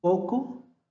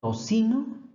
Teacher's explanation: en poco se pronuncia como k y en tocino es una sa